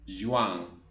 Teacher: Pero básicamente se nasaliza la segunda vocal.